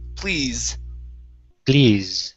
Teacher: this is going to be a voiced s at the end z